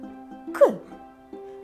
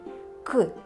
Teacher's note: приголосний звук ми вимовляємо його з перешкодою нам наче Щось заважає його вимовити к і глухо вимовляємо це глухий приголосний